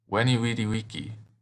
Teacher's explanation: The V in Latin actually makes a W sound like a W.